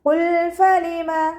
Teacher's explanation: ഖാഫ് ഇസ്തിഅലാൻ്റെ ലെറ്ററാണ് തഫ്ഹീം ചെയ്തിട്ട് ഉച്ചരിക്കുക.